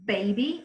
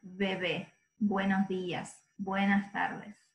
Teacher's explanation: It's that's. We don't have a distinction between B and V. We pronounce both in the same way, and it's a very soft bilabial sound.